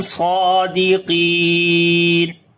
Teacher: Swad we read in heavy sound and also we long due to standing fatha on it.